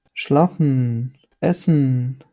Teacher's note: в кінці слова якщо особливо воно стоїть після букви е вимовляється через ніс і приглушує голосну Е що її практично не чути